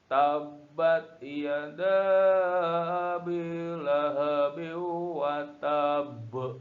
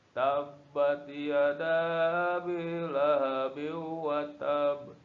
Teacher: Qalqalahnya meskipun ini tidak sukun, tapi karena berada di akhir kalimat, maka ini dimatikan dan disukunkan, jadilah dia baknya bak mati, ya. Maka itulah yang disebut dengan qalqalah kubro, dibacanya tebal, ya. Jadi cara membacanya adalah tabbat yada bilahabi wa tab.